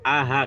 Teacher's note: Kamu raba aja, pegang tenggorokan yang paling bawah itu ah, keluarnya dari sini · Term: aqsal halqi